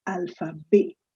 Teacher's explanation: said alpha b and not alphabets although we write alphabets but we pronounce it as alpha b the t is silent